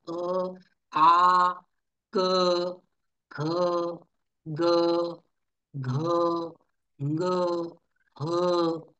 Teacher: ठीक आहे या वर्णांचं कंठामधून उच्चारण होतं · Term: कंठ्य